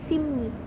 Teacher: dua sisi bibir kemudian suaranya ditutupkan dari kedua bibir itu jadi bunyi p yang berada pada akhir suku kata dan bertemu bunyi R yang berada pada awal suku kata itu akan membuat bunyi R itu mengalami nasalisasi menjadi n bunyi P itu sendiri akan mengalami nasalisasi menjadi m yang sama-sama · bunyi P itu sendiri akan mengalami nasalisasi menjadi m yang sama-sama berasal dari bibir ini contoh perubahan bunyi pola p + r ini itu ada